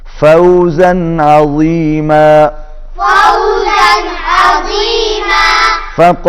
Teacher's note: فوزن تنوین کے بعد حروف اظہار میں سے عین آ گیا، تو یہاں پر اظہار ہوگا